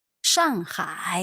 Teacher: So that's a fourth and a third.